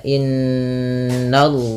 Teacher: suara n-nya ditahan dua harokat, tidak hanya sekedar inna tapi ditahan bunyi n-nya. Kemudian baru masukkan ke lafal Allah Subhanahu wa taala.